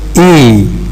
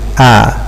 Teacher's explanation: For E, we need to raise the tongue. For A, we need to lower it. So when a vowel is being produced by raising our tongue, we say that it is high.